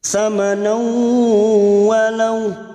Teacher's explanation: Bihi samanau, fathah tanwin bertemu wawu. Idgham bi gunnah, siap masuk ke huruf wawu dan mendengung selama 3 harakat